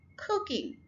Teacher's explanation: यहाँ पर हम फर्स्ट syllable के ऊपर स्ट्रेस डाल रहे हैं